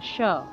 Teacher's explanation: তালব্যস্বর যেহেতু তালব্য বর্ণ, তালুতে লাগিয়ে উচ্চারণ করতে হবে